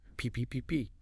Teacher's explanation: It's a stop consonant. Your lips actually stop the air for a split second.